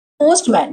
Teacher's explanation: In casual speech for instance the T sound is usually dropped when pronouncing camera or postman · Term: natural sound deletion